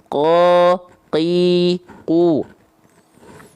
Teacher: dia sifatnya adalah jahr tidak mengalirkan sedikit pun nafas dari pelafalannya o Qi qu tuh enggak ada nafas keluar dia qo Qi · Karena nempel antara pangkal lidah dan hanya menyentuh dengan langit-langit yang lunak, maka dia sifatnya adalah jahar, tidak mengalirkan sedikit pun nafas dari pelafalannya. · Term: huruf q